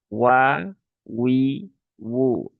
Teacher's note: Huruf yang ringan dia keluar dari bibir ya asyafatan ya dengan cara memonyongkan dua bibir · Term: huruf wau